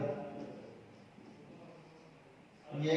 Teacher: ये बोल रहे हैं तो हमारी जिह्वा तालु को स्पर्श कर रही है। इस आधार पर यह हो गया तालव्य।